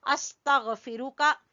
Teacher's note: फा को भी छोटा, रा को भी छोटा, काफ को भी छोटा